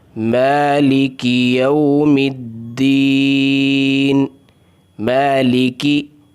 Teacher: مالکی ایک الف کے برابر کھینچنا ہے میم کو